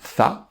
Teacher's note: la lettre tha, qui se prononce en mettant le bout de la langue sur le dessus des dents